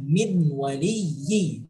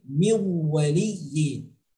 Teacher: Masukkan huruf nun mati ke dalam huruf waw seolah-olah bunyi nun mati menyatu bersatu dengan huruf waw yang ada setelahnya. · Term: idgham